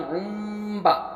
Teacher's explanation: और आइन मीम 2 पेश उम और बा ज़बर बा, उम बा, हालांकि उन था ये उन बा, लेकिन उम बा क्योंकि तनवीन बाद बा आया तो इसलिए हम तनवीन को मीम से बदल कर गुन्ना और इख्फ़ा के साथ पढ़ेंगे। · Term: इक़लाब